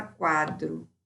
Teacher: semivogal na frente da vogal o movimento é de crescimento ditongo crescente